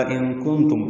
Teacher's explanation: ان کنتم میں نون ساکن کے بعد قاف اور تا آنے کی وجہ سے دونوں جگہ اخفا ہے. ان اخفا، کن اخفا، تم میم ساکن پہ اظہار شفوی.